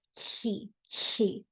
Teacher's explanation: behind the teeth where the tongue is placed behind the teeth the sides in the tongue lift to make a kind of slushy sound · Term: lateral lisp